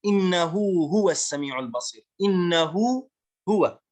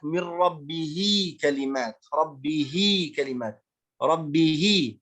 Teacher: هذه الهاء نسميها بهاء الضمير، فهذه الهاء تمد بمقدار حركتين فنسميها مد الصلة الصغرى